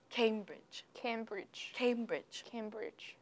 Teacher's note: So the stress is on the first syllable.